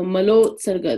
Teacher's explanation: when mala, which ends with an a sound, and utsarga, which begins with an u sound, come together, that a and u become an o.